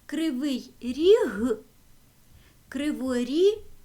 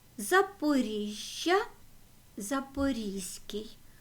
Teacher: звуки г ж з які стоять в кінці твірної основи якщо до них додаємо с дає нам звук з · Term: чергування